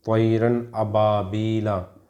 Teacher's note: یہاں پہ را کے اوپر 2 زبر لگا ہوا ہے تو تنوین کے بعد حمزہ آ گیا، اس لیے اس میں اظہار ہو رہا ہے · نون کو ظاہر کر کے بلا غنہ کے جلد پڑھیں گے، اس کو اظہار کہتے ہیں۔ اس میں آپ کو غنہ نہیں کرنا ہے، ناک میں نہیں چھپانا ہے، اس کو آپ کو صاف پڑھنا ہے۔